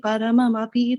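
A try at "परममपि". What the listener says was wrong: Parama Api. Why you should say like that? Paramapi. It should not be very distinctly, because in Sanskrit, you cannot do Chandi Vigraha when the verses are chanted. It should be done, it should not be explicitly seen also.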